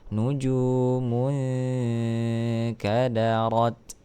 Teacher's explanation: Nujumun. Nah, di sini ada nun sukun bertemu dengan huruf kaf, maka hukumnya adalah ikhfa. Maka dibaca samar.